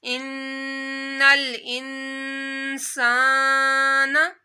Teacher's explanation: نون ساکن کے بعد سین آ جائے تو یہاں بھی غنہ کرتے ہیں، ناک میں آواز لے کر جائیں گے